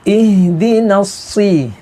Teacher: jangan sampai dibaca seperti sambung dengan waw